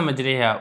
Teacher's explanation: فتح کو کسرہ کی طرف آپ نے مائل کرنا ہے، الف کو یا کی طرف آپ نے مائل کر کے پڑھنا ہے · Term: امالہ